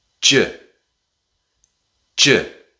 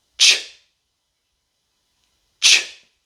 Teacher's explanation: The j sound is very similar to the ch sound that we practiced in the last video. The difference is with the j sound, you add your voice. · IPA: /dʒ/ /tʃ/